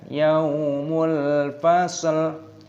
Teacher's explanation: yaumul, alif lam qamariyah, ini lamnya dimatikan.